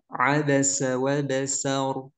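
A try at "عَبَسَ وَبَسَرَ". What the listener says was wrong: Wa basara aja dibaca semuanya.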